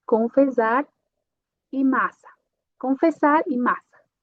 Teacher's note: se eu tenho S mais S, o som só vai ser como uma só S.